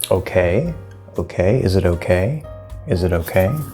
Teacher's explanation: The question tone does go up, and it does take this higher, and we get a little question curl, as I like to describe it.